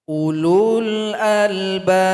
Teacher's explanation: ada waw yang polos yang tidak berharokat. Maka nggak usah dibaca. Dia punya fungsi dalam bahasa Arab, tapi dalam bacaan dia tidak dibaca.